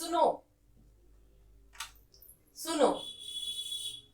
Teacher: प्लुत स्वर होता है जब हम किसी को बुलाते हैं, इसमें 3 मात्राओं का प्रयोग होता है